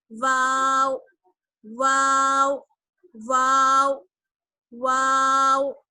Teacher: واو کا مخرج ہے دونوں ہونٹوں کی گولائی. جب ہم دونوں ہونٹوں کو گول کر لیتے ہیں تب وہاں سے ادا ہوتا ہے واو